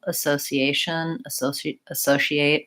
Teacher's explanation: trying to lightly touch that first syllable